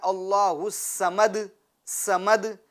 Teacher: اب اگر کوئی یوں پڑھتا ہے اللہ الصمد، سمد یعنی پور نہیں کرتا ہے، باریک کرتا ہے، تو باریک کرے گا تو وہ سین والی آواز ہو جائیں گی